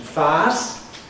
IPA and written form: faːs (face)